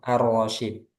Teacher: Kalau dari segi tajwid itu memang harusnya dia idgham arrasyid karena bertemu dengan ro